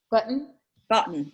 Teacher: at the end there is what's called a syllabic consonant because it really is tricky to find a vowel in there